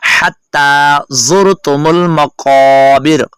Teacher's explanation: काफ मोटा है और इसको थोड़ा सा लंबा करेंगे